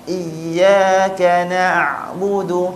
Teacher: huruf ain yang fasih bila kita sebut dia tak bunyi mati terus